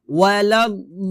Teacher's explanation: এখানে আমরা 4 আলিফ টান দিয়ে লামকে ধরবো, ওয়ালাদ-দাল্লিন, লিনে গিয়ে আবার 3 আলিফ টান দিব।